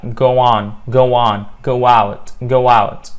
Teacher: the hidden W in go on and go out